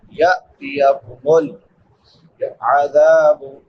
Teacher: ذال کے بعد الف مدہ ہے، الف سے پہلے زبر ہے، اس کو ایک الف برابر لمبا کریں گے. ثم میم مشدد ہے، شد والی میم، اس پہ ہمیشہ غنہ ہوتا ہے.